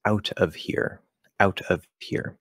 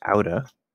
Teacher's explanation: So just like we have wanna, gonna, have to with to, in this case, it's actually not to, it's of. And we're dropping the V on of,